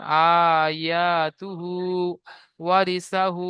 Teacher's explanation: হায়ের উপরে উল্টো পেশ এসেছে, উল্টো পেশ ওয়াও মাদ্দার সমতুল্য, সুতরাং উল্টো পেশকে এক আলিফ পরিমাণ টান দিয়ে পড়তে হয়।